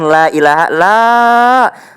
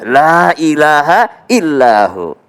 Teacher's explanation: Jadi yang perlu diperhatikan disini adalah lailaha lah itu harus panjang ya